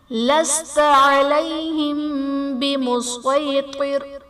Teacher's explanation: علیہم بمسیطر میں میم ساکن کے بعد حرف با ہے، تو یہاں پر اخفاء شفوی کا قاعدہ ہوگا، یعنی میم ساکن میں ہم غنہ کر کے پڑھیں گے